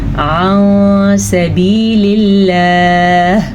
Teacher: یہاں بھی لفظ اللہ سے پہلے زیر ہے تو آپ نے اسے باریک پڑھنا ہے